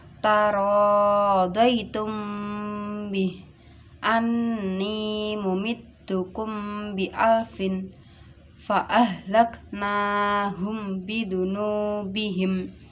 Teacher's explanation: Mem sukun bertemu ba dinamakan ikhfa syafawi. Harus dibaca dengung 1 alif atau 2 harokat.